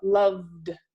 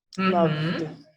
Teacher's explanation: Então, você vai falar loved. Então, essa VD, essa é junto, sem o som de vogal no meio.